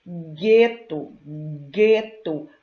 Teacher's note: Vocês também não ouvem o som do U. Vocês ouvem apenas o som do G